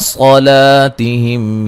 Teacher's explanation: صاد کو موٹا، لام کو باریک پڑھنا ہے